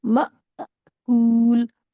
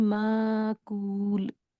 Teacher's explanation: अगर इसको अलिफ मान ले माकूल को, तो आवाज हो जाएगी माकूल, और अगर इसको हमजा माने तो आवाज होगी म, विद जर्क, झटके के साथ, माकूल। क्योंकि साउंड ऑफ हमजा अ है और साउंड ऑफ अलिफ कुछ भी नहीं है, जो पिछला लेटर होता है उसी को स्ट्रेच करके पढ़ते हैं